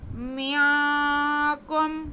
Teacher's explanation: آ رہا ہے جو کہ حروف اخفاء میں سے ہے، تو یہاں پہ ہم نون کی آواز کو ناک میں چھپا کے گنہ کرتے ہوئے آگے کاف ادا کریں گے اور پھر کاف کو میم کے ساتھ ملائیں گے کیونکہ